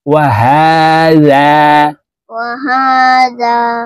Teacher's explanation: এখানে এই হাকেও এক আলিফ টেনে পড়তে হবে, কারণ হার উপরে খারা জবর আছে।